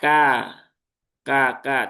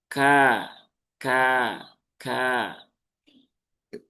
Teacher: Huruf kaf, kaf itu dia punya salah satunya adalah sifat hams. Hames itu ketika diucapkan ada keluar ya, keluar aliran udara beserta dengan suara yang dikeluarkan